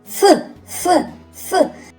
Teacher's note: Цей звук вимовляється коротко. Перешкодою при вимові є зубки і нижня губа. Звук ф є приголосним звуком.